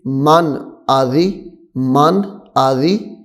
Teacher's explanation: یہاں پہ بھی ہم غنہ نہیں کریں گے کیونکہ یہاں پہ بھی نون ساکن کے بعد حمزہ آ رہا ہے. نون ساکن کے بعد حروف حلقی میں سے حمزہ آ رہا ہے.